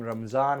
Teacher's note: Persian doesn't have the dod sound, so they mapped it to the closest sound they do have, which is the same letter pronounced zad.